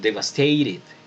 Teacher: Devastated, pronunciaría un británico. Un americano pues convierte la T en una R cuando están en medio de dos vocales.